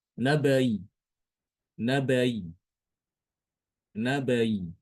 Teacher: hamzah kasroh dibaca antara hamzah kasroh dengan huruf mad, yaitu ya sukun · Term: tashil